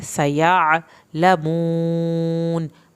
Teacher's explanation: सीन को सीटी के साथ पढ़ के या आइन की आवाज़ निकालनी है।